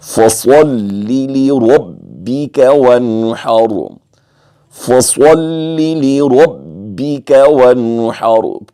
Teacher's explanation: اس آیت میں صاد کو پر پڑھیں گے، پھر را کو پر پڑھیں گے، پھر ونحر کی جو آخر پہ را ساکن سے پر پڑھیں گے.